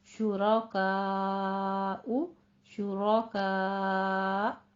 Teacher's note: हमजा को जब साकिन करते हैं तो मामूली सा झटका उसके ऊपर आ जाता है, लेकिन कलकला नहीं करना। शुराकाउ, शुराका, ऐसे स्टॉप कर देना है आवाज को।